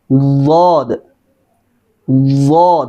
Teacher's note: खूब मुंह भर के मोटा अदा होगा